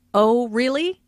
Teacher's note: Notice the rising intonation on really. This shows that the speaker is surprised.